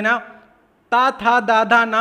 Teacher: तो ये आपका दंत से बोला जाता है, दांतों का आप इस्तेमाल करते हैं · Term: ता वर्ग